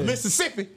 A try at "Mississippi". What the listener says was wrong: Why you say Mississippi so hard? Try to say all the S's.